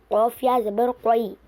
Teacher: یا زبان کے بیچ کے حصے سے ادا ہوتا ہے۔ یا پر تشدید ہے، تشدید والے حرف کو 2 مرتبہ پڑھتے ہیں، ایک بار پچھلے والے حرف سے ملا کر ایک بار خود اسی سے۔